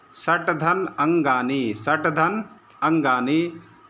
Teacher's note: झल प्रत्यार वाला जो वर्ण है ट का उच्चारण स्थान है मूर्धा